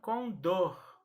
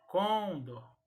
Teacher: na hora de pronunciar esta palavra é a sílaba mais forte será a última então se pronuncia com dor e não condo então a pronúncia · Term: oxítona